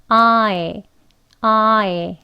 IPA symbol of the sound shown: aɪ